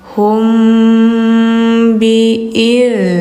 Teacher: mim ketemu ba. Nah, ini hukumnya ikhfa syafawi ya. Didengungkan.